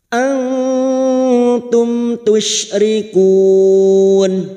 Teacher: nun sukun dibaca samar dan mendengung selama tiga harakat · Antum tusyrikun, mim sukun bertemu ta idhar syafawi. Mim sukun dibaca jelas tanpa mendengung. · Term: Izhar Syafawi, ikhfa Hakiki